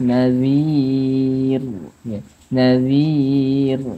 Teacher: Nir baik ini panjangnya kadar panjang 6 harakat Mad Ar sukun rnya mati dalam keadaan tipis maka ketika kita bacanya harus meringis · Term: ro'nya mati